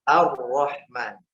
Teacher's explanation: Masuknya lam tidak dibaca, masuk ke huruf ra. Kalau dieja ya syamsiyah mudghama fi ra'il maftuhah. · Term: idgham kamil